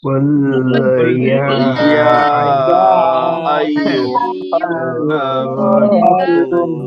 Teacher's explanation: আপনার তিন আলিফ মাদের চিহ্ন রয়েছে, এই জন্য এখানে তিন আলিফ টেনে পড়তে হবে।